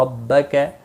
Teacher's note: ربک را زبر کی وجہ سے پر پڑھا جائے گا